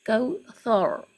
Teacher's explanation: اس سے پہلے تا کے اوپر زبر ہے تو اس کو ہیوی ساؤنڈ کے ساتھ پڑھیں گے، زبر پیش ہوگا تو موٹا، ثور، ثور مطلب ساؤنڈ آف را جو ہے وہ ہیوی ہوگی